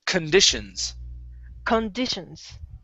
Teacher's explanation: Okay, Con. yeah, the stress is going to be on condish right here.